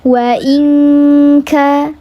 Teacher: nun sukun menghadapi huruf kaf dibacanya ang, namanya ikhfa hakiki yang ab'ad · Betul, ab'ad karena hurufnya yang kaf dibacanya dileburkan, disamarkan disertai dengan gunnah 3 harakat